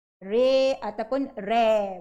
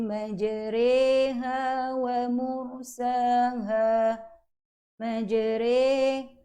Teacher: Cara bacaan ialah membunyikan huruf ra di antara baris atas dengan baris bawah seakan sebutan ray.